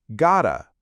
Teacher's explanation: Got to becomes one quick sound.